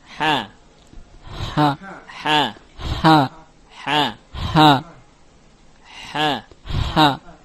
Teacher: Ha keluar dari wasatul halqi, dari tengah-tengah tenggorokan. Baik, atau kerongkongan. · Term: Ha maftuhah